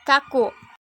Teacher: Bunyi K dengan ciri-ciri mati, oral, veral, plosif dengan contoh kata kaku.